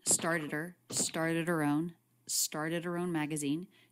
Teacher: the word her she doesn't drop the h although that is a common reduction